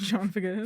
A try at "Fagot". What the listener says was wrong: Fagot. The T is silent.